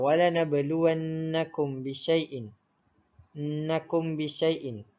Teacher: ianya dibaca dengan dengung ataupun didengungkan dengan kadar 2 harokat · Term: ikhfa syafawi